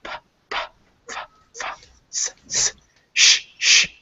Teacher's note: If you say those sounds like P, F, all the ones on the left, P, F, T, S, if you feel your vocal cords, you don't use your vocal cords to make them